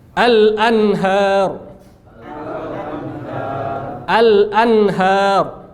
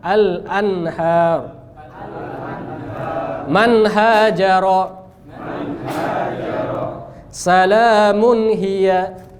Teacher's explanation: lidah kita di makhraj nun dan enggak boleh dengungnya panjang. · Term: izhar